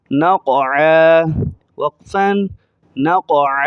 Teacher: نون کو قاف کے ساتھ ملاتے ہوئے قاف کو موٹا کریں گے